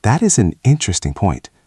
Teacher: Listen to the intonation there. It goes up and down gently.